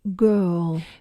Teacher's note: il s'agit d'une voyelle longue puisqu'on ne prononce pas les R en anglais, comme dans girl, sauf en anglais américain où le R va être un petit peu vocalisé.